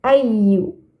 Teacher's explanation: di sini ya bertasydid. Maka harus ditekan bacanya.